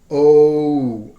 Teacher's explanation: the glide from o to oo, to make the o sound, because we rarely use and almost never use in American English this sound, o. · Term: diphthong O